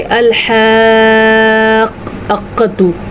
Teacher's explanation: अल-हाक़्क़ा, ठीक है, क़ाफ को मजबूती से पकड़ना है। बाज़ लोग क्या करते हैं कि वो अलिफ की आवाज़ बीच में डाल देते हैं, जैसे कि अल-हाक़्क़तु, ऐसे नहीं, हमज़ा को नहीं डालना बीच में, क़ाफ को ही डालना है और क़ाफ पे ही आपने ज़ोर से पकड़ना है और फिर क़ाफ को आराम से छोड़ देना है।